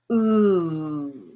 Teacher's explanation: and notice how i'm rounding my lips when i say that if you get your tongue further back still high you get the blue ooh